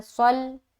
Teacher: सौद को लाम से मिलाया मोटे तरीके से